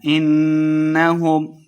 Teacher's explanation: انہم نون مشدد ہے غنہ کر کے پڑھیں گے،